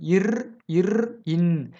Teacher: நாக்கோட நுனிப்பகுதி போயி அன்னத்தோட நுனியில போய் பொருந்துதாம்.